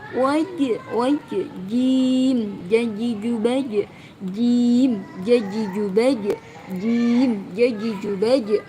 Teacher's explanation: jim sukunnya dibaca qalqalah, dibaca memantul ya. Mungkin masih wajhallahi masih kurang ya, dipantulkan.